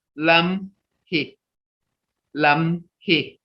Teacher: You don't hear the me in there, but your lips are going together.